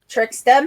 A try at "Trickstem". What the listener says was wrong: It's Trickstem, not Tricksterm.